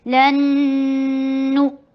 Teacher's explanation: नून के बाद हरूफ यरमलून में से आ रहा है तो इदगाम हो रहा है बगुन्ना।